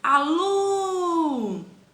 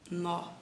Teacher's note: Então, a sílaba tônica é lu.